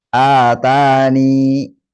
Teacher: menetapkan huruf ya dengan mensukunkannya dan dibaca panjang dua harakat menjadi atani.